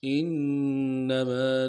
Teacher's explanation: نون کے اوپر تشدید ہے، زور دیں گے، میم کے بعد الف مدہ ہے، کھینچیں گے